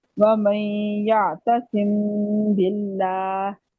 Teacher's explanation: میم کی آواز کو ناک میں چھپا کر اظہار و ادغام کی درمیانی کیفیت کے ساتھ ادا کرنا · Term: اخفاء شفوی